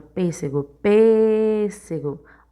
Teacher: o pês, ele é a sílaba tônica e o pês é a antepenúltima sílaba da palavra. Então, ele é proparoxítona.